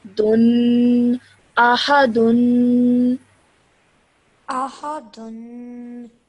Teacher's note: Okay, this is a dal, the letter dal with a dhamma ten on top of it. So you produce that nasal sound at the end with a dhamma ten.